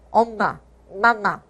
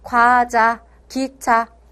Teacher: 그래서 일단 비음부터 보면, 자, 원래는 우리가 소리가 다 이 입안으로 소리가 이렇게 뿜어 나오거든요. 근데 요 비음은요, 입안 통로는 막고 코로 공기를 내보내면서 내는 소리입니다. 그래서 여러분들이 감기에 걸려서 코가 막히면 코맹맹이 소리가 나죠.